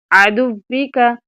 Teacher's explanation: ہونٹ گول بھی ہوں اور واؤ کی شد بھی نہ خراب ہو اور واؤ کی زیر بھی نہ خراب ہو۔